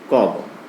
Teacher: क और ग जो होते हैं अल्प प्राण वर्ण होते हैं